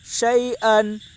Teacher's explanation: یا ساکن سے پہلے زبر ہے، اس لیے یا لین ہوگی، یا لین کو نرم آواز کے ساتھ جلدی ادا کریں۔ معروف پڑھیں، مجہول آواز سے بچیں۔